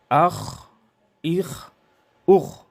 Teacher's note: آواز موٹی اور جاری رہے استعلاء اور رخوت کی وجہ سے